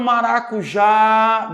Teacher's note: ou chamando a palavra Olha o maracujá demora mais tempo onde demora mais tempo no já ela é uma palavra oxítona